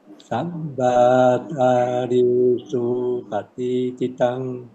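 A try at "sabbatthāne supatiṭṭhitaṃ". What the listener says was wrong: Okay, better, but you must practice the mi short, the sabbata, because you want the sabba to be short, so you join to the next syllable. Sabbata ne supatititang.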